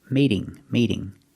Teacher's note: now the t is between two vowels so it's a fast D